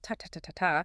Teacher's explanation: So a language like Spanish is syllable-timed. Every syllable gets roughly the same amount of time